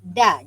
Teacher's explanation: dia hujung lidah belakang gigi hadapan, belakang gusi.